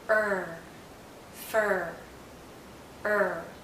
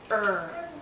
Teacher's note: central heart is going up because the tip is curling back there's some tension in my tongue when I say earth because there's curling and there's rising